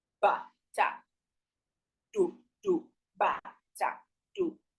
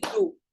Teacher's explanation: The backward slash is the low tone, do. The next tone too is do. So this word, 2 the same tones.